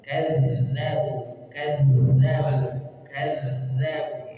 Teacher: Yang ketiga, sifatnya rakhawah. Rakhawah berarti membaca huruf dzal dialirkan dulu ketika sukun.